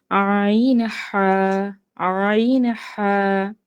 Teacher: দুই নাম্বার মাখরাজ কন্ঠনালীর মাঝখান হইতে অর্থাৎ হালকের মধ্যখান হইতে